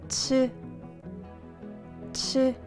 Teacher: we can make the sound of 치읓 where the sound of 지읒 is made, by adding a tough sound